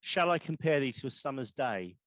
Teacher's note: he would write in iambs, which is 2 syllables, soft then hard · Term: iambic pentameter